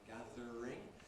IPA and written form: ˈgæðr̩ɪŋ (gathering)